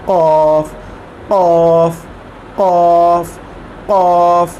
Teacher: और इसका जो मखरज है, यहाँ से ये शुरू होता है अदा होना, वो है हमारा जो हलक है उसका जो बैरूनी हिस्सा है, ज़बान का जो आखिरी हिस्सा है, ज़बान का जो आखिरी हिस्सा है उस वहाँ से शुरू करेंगे और हमारी ज़बान ऊपर की तरफ उठेगी तो ये कॉफ अदा होगा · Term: मोटा